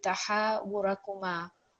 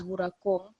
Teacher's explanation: Sometimes it's quite easy to think that it's just going to take a sukoon, so you read it as wurakum. But again, because it's alif madda here, it's a madda letter. It's going to be 2-second prolongation.